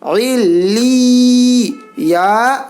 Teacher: علی، یا کو یا میں ملانا ہے